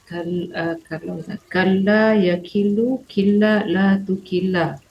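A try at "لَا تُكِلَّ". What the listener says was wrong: Lata. Lata bukan latu. Ibu tadi cakap latu. Harusnya lata. tadi membacanya kalla yakilu killa la tukilla. Nah, tu-nya salah.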